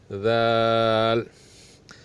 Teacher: زبان کو دونوں دانتوں سے تھوڑا باہر نکال کے، اس طرح کہ زبان کی جو نوک ہے اوپر والے دانتوں سے छूने न पाए